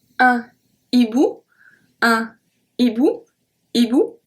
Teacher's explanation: H aspiré act as a consonant, so we do not link the words.